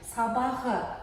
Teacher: сонда Қ дыбысы Г дыбысқа өзгерді